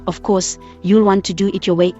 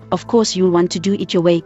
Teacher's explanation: in the first sentence you is stressed in the second course perhaps accompanied by a sneer is emphasized with a secondary stress on your